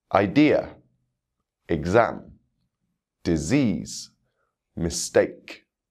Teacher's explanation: you can hear the stress falling on the second syllable in these words